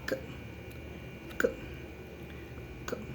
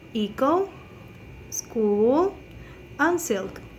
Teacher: The place of articulation is linguovelar because there is a contact with the tongue and the velum.